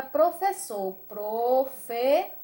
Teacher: a última é a mais forte então professor também é do grupo das oxítonas